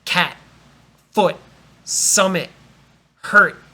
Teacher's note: The T at the end of a word is a stop.